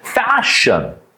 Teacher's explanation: Fa, and then there is unvoiced consonant sound. Sh, F is unvoiced, and a sh is unvoiced, and bit longer, stretch it.